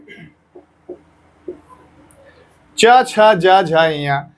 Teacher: इसलिए इसका उच्चारण स्थल तालु है या तालव्य च, छ, ज, झ, ञ इसका उच्चारण स्थल तालु है।